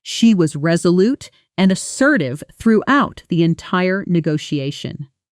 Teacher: Now listen to how a native speaker would actually say this at natural speed where was resolute often blends together slightly almost like was resolute with the stress landing hard on the second syllable of resolute